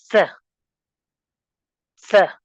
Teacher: अपने टंग की टिप को आप टच करेंगे अपने अपर टीथ के बैक साइड से, बिल्कुल हल्का सा ऊपर करके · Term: एविलर